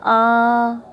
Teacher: प्लुत स्वर, प्लुत स्वर में इन 11 स्वरों में से कोई भी स्वर आ सकता है और उनके आगे जैसे ये ओ स्वर है, इसके बाद में ये एस जैसा ये निशान लगा होता है, चिन्ह एस जैसा, इसका मतलब होता है कि ओ को अपन ज़्यादा लंबा खींचे और 3 मात्राओं के समय तक इसको बोले। जैसे अपन ओम का उच्चारण करते ओम, जैसे अपन ने बोला आ, या किसी को आवाज़ लगाते हैं तो अपन जो लंबा खींचते हैं किसी स्वर को उसे कहते हैं प्लुत स्वर।